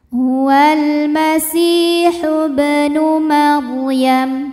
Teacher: karena ba sukunnya asli dan ada di tengah bacaan maka bunyinya memantul ya dengan pantulan yang kecil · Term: Qalqalah Sugra